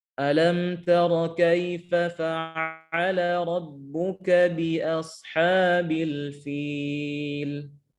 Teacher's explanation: huruf fa keluar dari perut bibir bawah bertemu dengan gigi seri atas